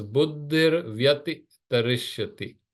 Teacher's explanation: the visarga joins with vya and becomes ar. So it becomes buddhir vyati tarishyati.